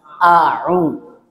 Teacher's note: Jadi jangan dibaca tebal jadi o.